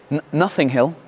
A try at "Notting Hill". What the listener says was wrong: Ouais, mais pronounce the fucking T.